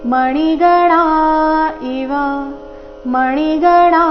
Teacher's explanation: ಣ ದೀರ್ಘ ಇವ ಎರಡು ಸಹ ರಸ್ವ